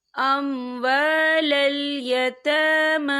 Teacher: یہاں دونوں جگہوں پہ کھڑی حرکات ہے، تو ہم اسے 2 یا 3 حرکت کے برابر کھینچ کے پڑھیں گے۔